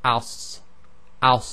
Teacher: you have the near closure of the mouth, and there's continuation of the breath as well, and it's a heavy letter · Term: sad